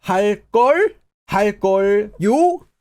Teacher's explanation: When you have a verb that ends with 걸 or 걸요, this is used with a rising intonation on the final syllable. So if you're using 걸, like 하다, you have to add a rising intonation on the final syllable in that verb.